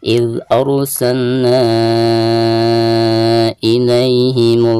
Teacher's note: Antara kalimat arsalna dan kalimat ilaihim ya. Maka dihukumi mad jaiz munfasil, dibacanya bisa 4 atau 5 harokat